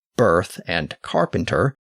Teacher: if you pronounce words like birth and carpenter with distinct R sounds as birth and carpenter, then you have a rotic accent.